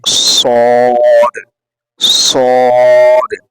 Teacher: इसमें जो है एक सीटी की तरह आवाज निकलनी चाहिए स्वाद को अदा करते वक्त